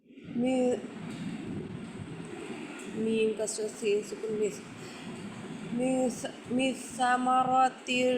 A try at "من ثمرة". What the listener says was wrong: মিসামা হয়ে গেছে এখন মিসা।